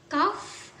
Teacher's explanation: huruf kaf ini termasuk huruf velum, yaitu bertemunya langit-langit lunak. Nah, huruf kaf ini termasuk huruf oral jika berdasarkan bunyi yang keluar.